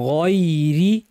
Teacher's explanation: গয়নটাকে বাংলা গয়ের মতো শক্ত করে গয়রি বলা যাবে না, একটু সফট করে বলতে হবে গয়রি। গয়রিল মাগ বলার সময় মিমটা পাতলা, গয়নটা ভারী।